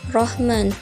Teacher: huruf ro dibaca tafkhim tebal karena berharokat fathah. Rahman, ini nama hukumnya adalah mad arli lisukun.